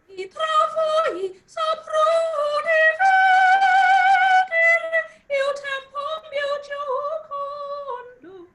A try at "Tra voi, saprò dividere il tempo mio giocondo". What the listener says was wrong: Now, you are singing too light. Travoi. No, travoi. No, it's not meaning of pressure. It's not a thing of pressure. It's how you think on your voice. It's not pressure. You don't have to give force.